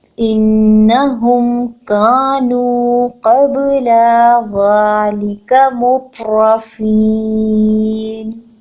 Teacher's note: یہاں پر ہم غنہ کریں گے، نون مشدد پر غنہ کرتے ہیں